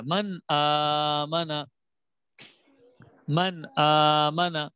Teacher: تو نون ساکن کے بعد جب حمزہ آ جائے تو وہاں پر ہم نے غنہ نہیں کرنا ہوتا ہے, نون کو ظاہر کرنا ہوتا ہے. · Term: اظہار